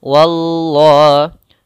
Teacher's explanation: Wa-nya tipis, Allahnya tebal.